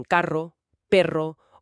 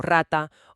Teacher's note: la vibrante múltiple, r, que son varios golpes seguidos